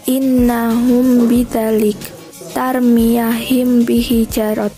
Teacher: Dinamakan syafawi karena mahraj mim dari syafah atau bibir ketika bertemu dengan huruf ba, mim sukun dilafalkan samar menjadi gunah. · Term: ikhfa syafawi